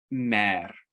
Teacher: mer with the rolled r in the front of your mouth